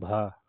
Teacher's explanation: भा ओष्ठ भी है, महाप्राण भी है और घोष है।